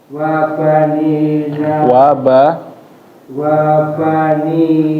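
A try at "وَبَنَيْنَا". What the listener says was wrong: Bukan ni harokatnya.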